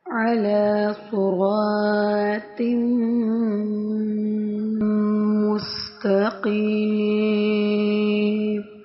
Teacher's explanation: علی عین پڑھنا ہے، حمزہ نہیں پڑھنا.